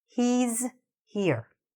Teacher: We do need to hear that extra s or z sound. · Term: missing s